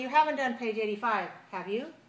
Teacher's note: So if I use rising intonation, that means I'm not sure.